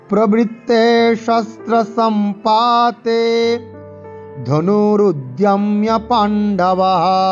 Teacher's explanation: পাতে টান হবে আর তেতে টান হবে